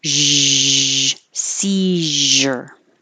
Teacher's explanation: So if you have trouble finding Z, make sh first, because that puts everything in the right position. Your tongue and the airflow, shh, like you're saying, be quiet, shh, but use sound in your throat. Zzz, seizure.